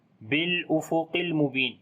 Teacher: لام کے اوپر صفت توسط کریں گے اور قاف کو موٹا پڑھیں گے